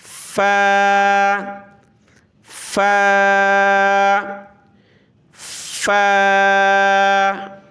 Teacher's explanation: اوپر کے دانت جو ہیں نچلے ہونٹ سے ٹچ ہوئے